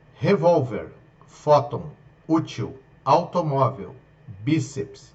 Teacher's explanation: Se eu for separar aqui, eu vou ver que revólver. Ok, toda a tonicidade delas está na paroxítona, na penúltima sílaba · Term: paroxítonas